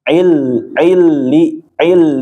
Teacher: idgham bila gunah jadi dia masuk tanpa ditahan